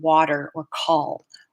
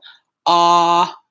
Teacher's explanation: the ah sound that we have this low back unrounded vowel is what we use in water or call